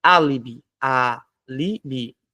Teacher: A sílaba tônica é o A, álibi. Se é a antepenúltima, repara, ó, última, penúltima e antepenúltima. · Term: proparoxítona